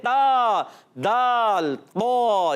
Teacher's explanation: یہ ادا ہوتے ہیں زبان کے سرے اور اوپر کے دانتوں کی جڑوں سے